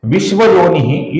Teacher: इस विसर्ग के आगे श आया हुआ है, तो श की वजह से इस विसर्ग का हम हल्का सा श ऐसा उच्चारण करेंगे